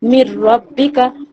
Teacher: নুন সাকিনের পরে ইদগামের ইয়ার মালুনের র এসেছে, তাই এখানে বিনা গুন্নায় পড়তে হবে। একে ইদগামে তাম বা বেলা গুন্না বলে।